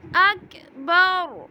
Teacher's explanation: را کے اوپر پیش ہے اس لیے ہم را کو پر پڑھیں گے